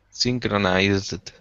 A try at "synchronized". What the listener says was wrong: Good, yeah. Get that Z at the end.